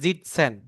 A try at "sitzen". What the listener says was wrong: সিটসেন। সিটসেন। না না, যেটা এখানে হবে না, এসের উচ্চারণ জি হবে না, বিকজ তার আগে ভাওয়েল নাই, হ্যাঁ।